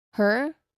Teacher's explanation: this vowel sound is a mid central vowel